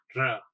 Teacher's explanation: સેજમથી vibration મોડમાં. એ ર બોલીએ છીએ એટલે જીભ વાઇબ્રેટ. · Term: પ્રકંપી ધ્વનિ